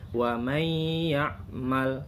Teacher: ini nun mati didengungkan bunyinya karena sesudahnya ada huruf ya. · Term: idgham bigunnah